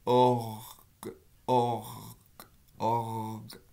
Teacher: Si vous essayez vraiment de faire un re sonore, le que va devenir un ge et ça va devenir org.